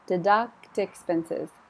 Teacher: There was a time when you could deduct expenses. So the T is there, but it jumped over on the vowel.